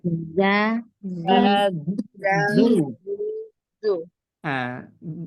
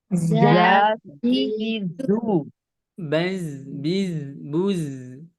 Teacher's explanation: yang nampaknya aja satu jahar, rokhawah, infitah, dan sofir